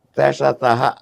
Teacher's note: శేష సహ అన్నప్పుడు ఉచ్చారణలో కొంచెం మన ఊపిరి బయటికి వచ్చినట్టు గాలి బయటికి వచ్చినట్టు వస్తుంది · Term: ఊష్మములు